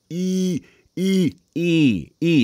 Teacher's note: the E vowel sound, E, just by itself is already pretty nasal · It comes out the nose more than it comes out the mouth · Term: nasal tone